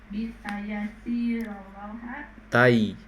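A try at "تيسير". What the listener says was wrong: taisiri. Bukan tayasir, taisir, wazan taf'ilan.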